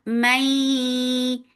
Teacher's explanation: Idgham with gunna, so keep the sound in your nose for a longer time